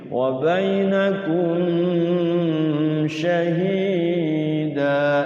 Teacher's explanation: Namanya izhar syafa syafawi. Jelas enggak boleh mimnya didengungin. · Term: izhar syafawi